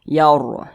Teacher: Ini ada ro sukun, sebelumnya berbaris fathah, maka dibaca tabhim atau dibaca tebal. Yaur gitu. Jangan dibaca yar.